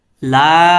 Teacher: এখানে 3 আলিফ টেনে পড়তে হবে, এটা হচ্ছে মদ্দে মুনফাসিল